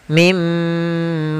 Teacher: langsung dimasukkan ke huruf setelahnya dan ditahan suara gunah pada huruf yang setelahnya. Kalau dia di huruf ya, ditahan di-nya, kalau di mim ditahan di huruf mimnya. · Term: idgam ghunah